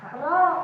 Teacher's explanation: Ro, ujung lidah nempel ke pangkal gigi seri atas. Gugusi agak ke atas sedikit.